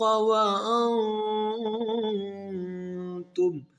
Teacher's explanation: اخفا غنہ ہے کیونکہ نون ساکن کے بعد حروف اخفا میں تا ہے